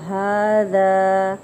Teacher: ہا کے اوپر کھڑی حرکت ہے تو ایک الف کے برابر کھینچیں گے اور ہا کا اچھے سے مخرج ادا کریں گے، اور ذا کو نرمی سے ادا کریں گے. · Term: مد اصلی